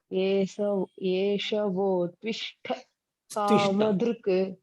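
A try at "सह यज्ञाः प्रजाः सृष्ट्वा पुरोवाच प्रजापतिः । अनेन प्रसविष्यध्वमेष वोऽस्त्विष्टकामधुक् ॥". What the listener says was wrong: Stvishta. No, this sa is there. Sa you pronounce this sa also. This sa is not coming. Yeshavostvishta kamathuk. This sa is not heard.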